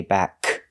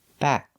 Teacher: I make the position of the K, but I don't release the sound. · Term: stop K